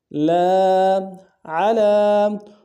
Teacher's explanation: عین کو گہرائی سے ادا کریں گے لام کے اوپر کھڑا زبر ہے ایک اندار میں کھینچیں گے